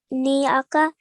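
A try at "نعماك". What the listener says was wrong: Well done, much better, well done.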